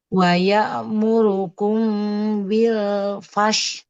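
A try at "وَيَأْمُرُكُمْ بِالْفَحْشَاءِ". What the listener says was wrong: Kalau biar nah biar tidak memantul itu lamnya jangan dilepas. Jadi bil fa langsung ke fa bil fa.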